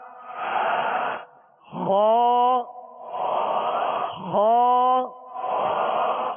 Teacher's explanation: خا ان 7 حروف مستعلیہ میں سے جو ہمیشہ ہر حال میں پر پڑھے جاتے ہیں، موٹے پڑھے جاتے ہیں